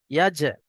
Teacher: হরুফে কলকলা পাঁচটি অক্ষরের মধ্যে থেকে এখানে জিম এসছে, আর জিমের উপরে সাকিন এসছে, তো একটু ঝাটকার সঙ্গে কলকলা করে পড়তে হবে।